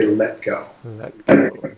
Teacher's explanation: when you say l in let go your tongue goes to a point just behind your upper teeth